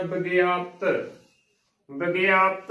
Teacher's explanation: ਤਤੇ ਦੀ ਜੋ ਆਵਾਜ਼ ਹੈ ਉਹ ਬਿਲਕੁਲ ਹੀ ਨਾ ਮਾਤਰ ਪੂਰੀ ਆਵਾਜ਼ ਨਹੀਂ ਦੇਣੀ ਹੈ ਕਿਉਕਿ ਤਖਤਾ ਅੱਧਾ ਲੱਗਿਆ ਹੈ। ਇਦਾ ਸ਼ੁੱਧ ਉਚਾਰਨ ਹੋਵੇਗਾ ਬਿਗਿਆਪਤ ਵਿਗਿਆਪਤ